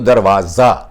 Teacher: दरवाजा, जा पे ज्यादा जोर आएगा